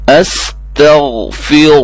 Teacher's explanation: را موٹی ہوگی، غین کو موٹا کرنا ہے، باقی سب کو باریک کرنا ہے۔